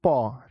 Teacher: प कहने पर देखो कहां हलचल हो रहा है। प तो देखिए दोनों ओष्ठ जो है ना आगे वाला वो एक दूसरे से चिपक रहा है।